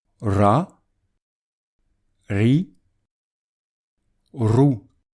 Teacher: Avec la lettre ra, il faut prononcer un R en faisant rouler la langue